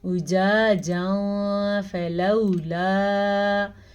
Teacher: أجاجا فلولا، یہاں بھی تنوین کے بعد فا حروف اخفا میں سے آیا ہوا ہے، تو اس لیے ہم یہاں پہ نون تنوین کو چھپا کے بھی پڑھیں گے اور غنّے کے ساتھ بھی پڑھیں گے